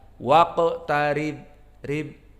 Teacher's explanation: karena ra dalam keadaan kasrah maka dibaca dengan muraqqaqah, lembut, tidak tebal